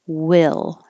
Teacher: now your tongue is staying pretty flat and just going up for the L.